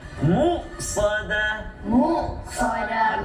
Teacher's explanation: Jangan tolak pergi ain jadi mu'. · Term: Hamzah